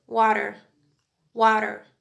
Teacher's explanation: in America the R sound at the end of word is much harsher